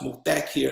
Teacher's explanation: And he told me, "Brother, what is your name?" And I said, " sir." And he told me it's pronounced Muthakir, and the accent is on the second syllable